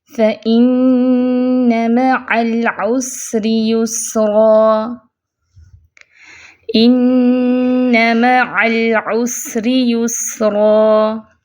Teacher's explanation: لام ساکن ہے، صفت توسط ہے تو درمیانی کیفیت میں آواز چلے گی